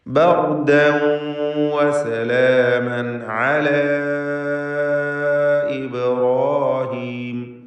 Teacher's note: വസലാമൻ അല, ഇവിടെ തൻവീനും ശേഷം ഐനുമാണ്. ഇൽഹാർ ഹൽഖി നൽകി മണിക്കാതെ വെളിവാക്കണം.